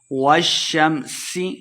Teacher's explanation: والشمس وضحاها، والشمس، شین مشدد ہے، واو کو شین کے ساتھ لانا ہے۔ والشمس، سین پہ سیٹی کی آواز آئے گی